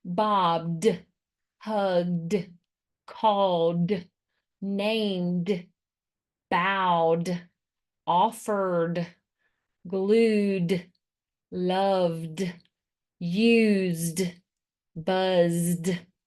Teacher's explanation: And that, when you add the ed, will give you words like bobbed, hugged, called, named, bowed, offered, glued, loved, used, buzzed. So my voice is already on, so the ed is going to stay on and make the D sound. · Sometimes ed says d at the end, and that is because it comes after a voiced phoneme. D is voiced, and the phoneme before it is voiced.